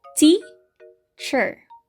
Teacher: we pronounce the first syllable more strongly than the second syllable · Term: stressed syllable